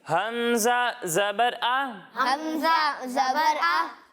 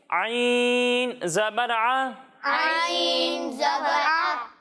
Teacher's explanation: اور جب ہم عین کی ادائیگی کریں گے تو اسے حلق کے درمیانے حصے سے پڑھیں گے